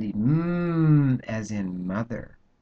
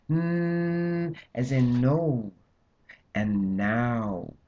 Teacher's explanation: with the M, both lips are involved, but with the N, the tongue goes up, it moves.